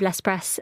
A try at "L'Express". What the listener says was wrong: You're not pronouncing the X in that, is that correct? L'Express, not L'Express.